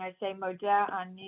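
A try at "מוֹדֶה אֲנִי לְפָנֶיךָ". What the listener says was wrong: That's right. That's right. Very good.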